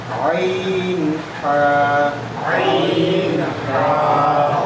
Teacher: দুই নম্বর মাখরাজ হলকের মধ্যখান হতে